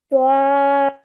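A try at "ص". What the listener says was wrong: Now try not to add a wow sound in the middle. So we're straight away going to take our sound upwards. Sod.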